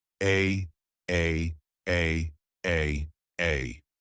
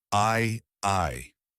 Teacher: sounds is about how long the vowel sound is but really it's about the quality of the vowel sound e is more tensed and I is more relaxed